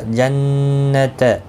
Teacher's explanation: نون مشدد پر غنہ ہوگا. غنہ کے ساتھ پڑھیں گے.